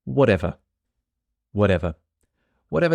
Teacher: This is a case where the T in whatever changes to a D when we say it quickly.